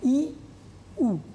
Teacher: ই, উ একেবারে দন্ত এবং তালুর কাছাকাছি, অর্থাৎ জিহ্বার অগ্রভাগ সর্বোচ্চ অবস্থানে থাকে। সে কারণে আমরা হ্রস্ব ই এবং হ্রস্ব উ একে বলছি উচ্চ স্বরধ্বনি।